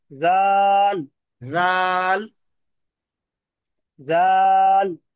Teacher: یہ غال نہیں ہے، یہ زال ہے، اس کو تھوڑا سا باریک پڑھیے